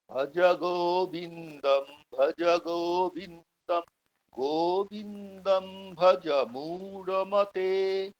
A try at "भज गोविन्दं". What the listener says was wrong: হুম, ঠিক আছে।